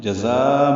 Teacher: وَذَلِكَ میں واو ہونٹوں کی نا تمام گلائی سے ادا ہوگی، دال نرمی سے ادا کریں گے، 2 حرکات لمبا کریں گے، لام کاف باریک ہے۔ جزا میں زا کو تیز صفیر کی آواز سے ادا کرنا